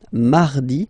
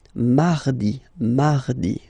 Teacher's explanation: you can hear that you don't pronounce it that strongly, this R.